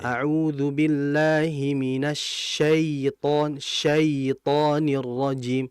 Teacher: Contohnya taawud syaitan ya mati sebelum ada syin tandanya fathah. Maka vokal ya itu vokalnya ke i. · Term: mad lin